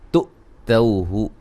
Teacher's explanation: حمزہ کو جھٹکے سے ادا کریں گے